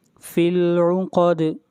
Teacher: دال کے اوپر قلقلہ